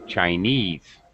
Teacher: normally, the stress would be on the end.